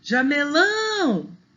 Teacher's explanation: o lão é a última sílaba, é a sílaba mais forte, né? Então, ela é oxítona.